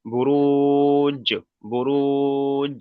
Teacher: জিমকে পড়ার সময় মাখরাজের সঙ্গে ধাক্কা লাগে একটু আলাদা হয়ে যাবে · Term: হরুফে কলকলা